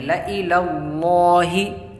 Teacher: اور یہاں پر زبر ہے تو اس لیے موٹی آواز میں لام کو پڑھیں گے، لائی للہ۔ دیکھیے یہاں پر الف نظر آ رہا ہے آپ کو، لام الف زبر لا نہیں پڑھیں گے اس کو، بلکہ لام زبر لا، یہ الف نہیں پڑھا جائے گا۔ · لام کو پر پڑھیں گے کیونکہ لام لفظ اللہ کے لام سے پہلے زبر یا پیش ہو تو لام لفظ اللہ کا پر ہوتا ہے، اور یہاں پر زبر ہے تو اس لیے موٹی آواز میں لام کو پڑھیں گے، لائی للہ۔